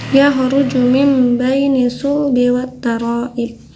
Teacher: ketika ada nun sukun ataupun tanwin ya bertemu dengan huruf ba, itu jadi berubah menjadi huruf mim ya. Huruf ba-nya itu disembunyikan. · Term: iqlab